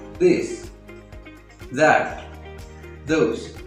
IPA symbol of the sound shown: ð